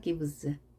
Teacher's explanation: 이렇게 유성화된 단어 뒤에는 같은 자, s가 z로 발음이 됩니다. 같이 해줘야 떨리면 같이 떨어줘야 부드럽게 발음이 되죠.